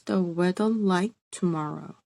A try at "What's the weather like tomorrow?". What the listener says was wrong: It sounded like you said, watch the weather like tomorrow, but you meant, what's the weather like tomorrow? It's not watch, it's what's.